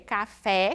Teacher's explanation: como por exemplo o café no espanhol isso nunca pode ocorrer sempre pronunciamos a vocal e com esse som fechado